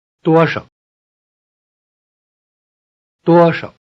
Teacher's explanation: The question word, how much, is made of two words, many 多 and few. 少 The word 少 few loses its tone in the combination.